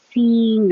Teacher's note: your tongue should be high in the middle and that makes the e as in eat